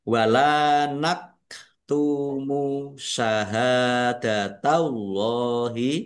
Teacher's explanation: Lam fathah alif mad thobi'i panjang dua harakat. Ini kaf sukun nak tumu ya jangan keliru hamzah atau ain naktumu syahadatallahi ha fathah alif mad thobi'i panjang dua harakat.